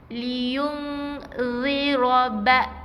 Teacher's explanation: Jangan bunyi liyun, tapi liyung ziraba sang, bukan z Ini bukan huruf z Dia adalah huruf zal yang nipis. Renggangkan gigi, lidah keluarkan sikit